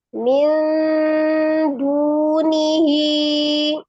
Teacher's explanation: Jadi disamarkan disertai dengan gunnah, tapi kadar samarnya lebih banyak daripada gunnahnya. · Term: ikhfa